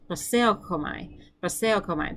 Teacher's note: I say it with a more of a k, like palatal fricative in the back of my mouth.